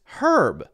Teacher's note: in British English you get our but it's herb so you hear the H there